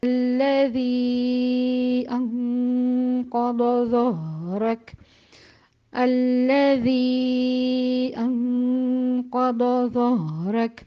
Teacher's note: الذی کا جو لام ہے وہ مشدد ہے، اور اس شدے کی وجہ سے دو دفعہ لام کی ادائیگی ہوگی ، پہلا لام جو ساکن کیا جائے گا اس میں توسط